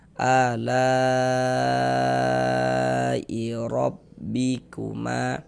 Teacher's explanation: Maka ini huruf ro dibaca tebal, dibaca tabkhim. Sehingga pangkal lidah kita naik terangkat ke atas ketika kita mengucapkannya.